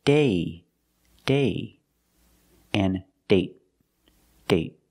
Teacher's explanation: So with date, we see the vowel is shorter because you have a stop T at the end.